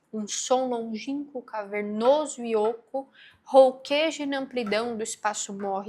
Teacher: E aí você vê uma repetição de vogais aqui como O, a vogal O, a vogal fechada.